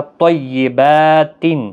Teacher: طیبات، یہاں پر تنوین کے بعد حروف حلقی کا حمزہ ہے، اظہار حلقی ہوگا، با کو کھینچنا ہے ایک الف کی مقدار کے برابر